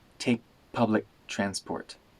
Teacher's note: the K sounds at the end of take and public disappear they turn into glottal stops